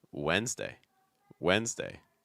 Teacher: notice that it's not pronounced really like the spelling at all that first D is not really pronounced